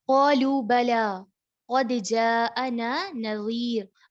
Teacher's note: اب یہاں پر قد، دال جو ہے حروف قلقلہ میں سے ہے، دال کو ہلا کر پڑھا جائے گا کیونکہ دال ساکن حالت میں ہے. اگر اس کے اوپر زبر ہوتی پھر ہلایا نہیں جانا تھا، لیکن جب دال ساکن حالت میں آ جائے تو اس کو ہلا کر پڑھتے ہیں.